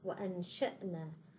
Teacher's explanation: الشين من الحروف المستفلة، أيضا ننتقل من الهمزة إلى الشين وغنة مرافقة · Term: الإخفاء